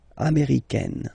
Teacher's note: it's really open, this A-I